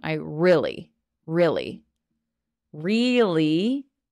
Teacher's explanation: really we make that e sound but if I'm talking a bit faster it kind of turns into an i sound